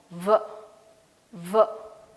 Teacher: Your upper teeth will be touching your lower lip, and in the lower lip you will be finding an itching sense. So if that is so, you are pronouncing the sound in a right sense, V. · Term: eighth sound V